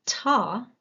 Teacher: when I'm saying da whereas if I say t that comparison my vocal cords start vibrating more like 91 milliseconds into T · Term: voice onset time